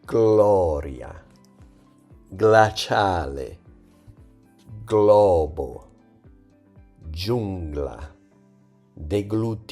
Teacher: Now, when GL is followed by a different vowel like A, O, or U, the pronunciation is different. It's a clear, separate G plus L sound, just like in the English word globe.